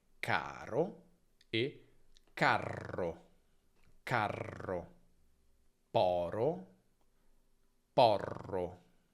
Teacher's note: La vocale prima si accorcia come sempre quando abbiamo una geminata e la R si allunga.